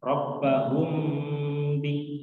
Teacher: ada mim sukun bertemu dengan ba, ya, jadi kita harus menahan, mengidghamkan, ya, dalam ilmu tajwid disebut dengan idgham syafawi, ya. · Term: Ikhfa syafawi